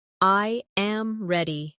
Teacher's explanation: The voice falls naturally at the end.